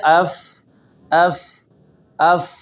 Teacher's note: تو یہ ہماری سانس جاری ہے اور آواز میں ایک قسم کی پستی ہے